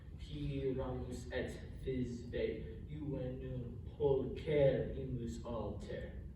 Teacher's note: You have Pyramus as a dactyl, long, short, short.